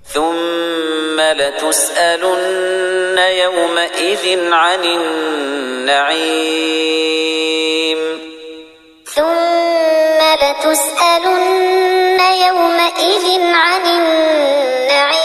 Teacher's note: یہاں پر دو زیر کی تنوین ہے، اس کے بعد حروف حلقی میں سے عین ہے، اس لیے اظہار ہوگا، غنہ نہیں ہوگا، ظاہر کر کے پڑھیں گے. یومئذ ایسے غنہ اخفا نہیں ہوگا.